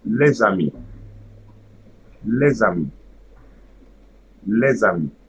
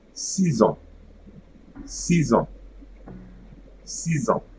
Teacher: there should be no pause between the first word and the second word. And at the beginning of the second word, I'm going to add a letter Z. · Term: liaison